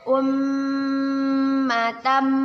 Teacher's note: Mim bertasydid. Kita baca dengan berdengung dan ditahan 2 harokat. Ummatam. Kita sebut dengan gunnah.